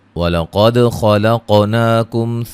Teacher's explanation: خاء کو موٹا ادا کریں گے، قاف کو موٹا اور قلقلہ